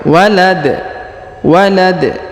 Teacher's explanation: Huruf da lagi berharokat a, kita sukunkan karena berada di ujung ayat atau di ujung bacaan, dan kita pantulkan. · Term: qalqalah